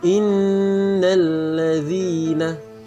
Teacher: berdengung dulu dua harakat atau dua detik